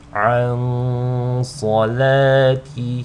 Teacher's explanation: you want to hold on to the nasal sound on the noon sakina for just 2 counts because of the sad. عَنْ صَلَاتِهِمْ. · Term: ikhfa